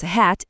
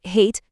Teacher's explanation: Tie ilgieji balsiai A ir O yra tarsi slystantis garsai, sudaryti iš dviejų dalių. Kitaip tariant, dvi balsiai.